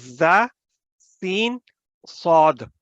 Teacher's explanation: اور آواز ان حروف کی فورس کرتے ہوئے باہر نکلتی ہے، اسی لیے وہ سیٹی کی آواز پیدا کرتی ہے